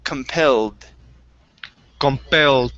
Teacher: give me a d sound instead of a t